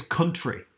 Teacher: that sort of deep u sound is very northern